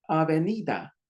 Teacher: Sometimes the D is pronounced like a TH.